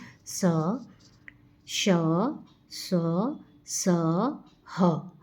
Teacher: जब हम इन व्यंजनों का उच्चारण करते हैं तो हमारे मुंह से गर्म हवा निकलती है। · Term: उष्म वर्ण